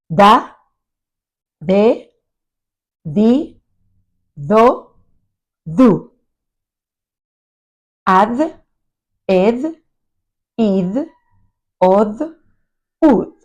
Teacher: In Spanish, it's an interdental sound. We place the tongue between the teeth, and it is very similar to the th sound in English, as in father or brother.